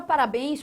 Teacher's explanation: A palavra parabéns possui a sua tonicidade aqui, ó, na última sílaba, bens. Ou seja, aqui você, de novo está trabalhando com uma oxítona.